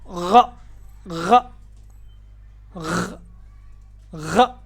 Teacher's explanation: غین کا مخرج گلے کا سب سے اوپر والا حصہ جس کو ادنا حلق کہتے ہیں، جہاں سے ہم غرارہ کرتے ہیں تو آواز نکلتی ہے، وہی جگہ اس کا مخرج ہے.